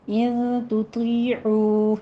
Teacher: ان تطیعوا یا مدہ ہے، کھینچنا ہے، ہونٹوں کو پست کرتے ہوئے 2 کاؤنٹ کیجئے، اور عو میں واو مدہ ہے، ہونٹوں کو گول کرتے ہوئے 2 کاؤنٹ کیجئے